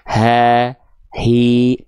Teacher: namanya pangkal tenggorokan ha hi karakter nafasnya enggak sampai bisik-bisik enggak selembut ha kecil